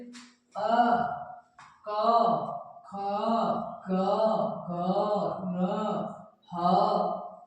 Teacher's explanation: ये जो वर्ण होते हैं ये हमारे कहाँ बोले जाते हैं, कंठ से। यानी कि इसमें हमारी जो आवाज आती है कंठ से आती है, जैसे अ, क, ख, ग, घ, न, ह और विसर्ग।